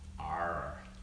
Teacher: see the Scottish dialect, we roll on R's